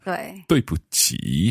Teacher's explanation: Third tone on the last one.